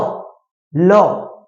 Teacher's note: ল বর্ণটা উচ্চারণ করার সময় আমরা দেখব জীবের দুই পাশ দিয়ে বায়ু বেরিয়ে যাচ্ছে। ল, জীবের দুই পাশ দিয়ে বায়ু বেরিয়ে যাচ্ছে। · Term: পার্শ্বিক বর্ণ